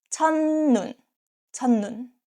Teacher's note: 첫 ends with T sounds, 첫, 첫, and next syllable start with ni은. This case, 첫 is pronounced as 천